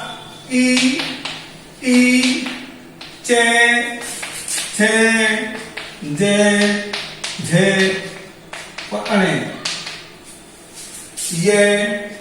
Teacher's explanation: इन वर्णों का उच्चारण स्थान तालु से होता है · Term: तालव्य